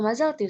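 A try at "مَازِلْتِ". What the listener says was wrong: Bukan mazalti, mazilti. sebelumnya sukun. Kalau domir anti, jadi sebelum T-nya ini sukun. Sebelum T-nya sukun.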